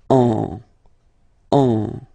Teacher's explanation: So it goes in your nose, and then you get the sound en. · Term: nasal